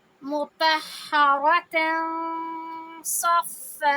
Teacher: ہوتا ہے اخفا میں، اور اخفا کا مطلب ہوتا ہے چھپانا۔ تو اب ہم تنوین میں جو نون کی آواز آ رہی ہوتی ہے اس کو ہم چھپاتے ہوئے دو حرکہ آواز کو لمبی کریں گے